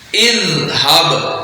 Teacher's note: زال کو بغیر سیٹی کے اور باریک پڑھنا ہے